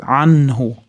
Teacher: Anhu-da izhor qoidasi, nun-da aniq bildiramiz